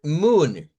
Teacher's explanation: Blue y moon sería un ejemplo de una long U, pero sin el sonido de esta especie de I.